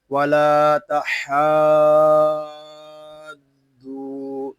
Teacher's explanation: مد لازم کو ہم 3 الف تک کھینچ کر پڑھیں گے